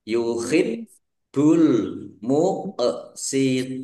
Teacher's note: Ba suk bnya dibaca dobel ada tasdidnya ya ditekan biar tampak dobelnya